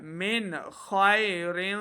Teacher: ساکن کے بعد آگے خا حروف خلقی میں سے ہے تو یہاں پہ اظہار کا قاعدہ ہے یعنی بغیر غنہ کے پڑھنا ہے